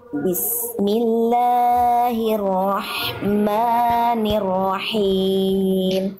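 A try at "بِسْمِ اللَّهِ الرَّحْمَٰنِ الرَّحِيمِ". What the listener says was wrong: La-nya kepanjangan Bunda. Bismillah, la-nya kepanjangan. 2 harokat. Bismillahirrahmani. Ma-nya juga 2 harokat.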